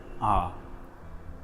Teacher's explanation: can notice a pattern let's start the first s is ah we open the mouth naturally Jaws apart and without any constriction anywhere in the mouth let out a primal sound ah next bring the Jaws closer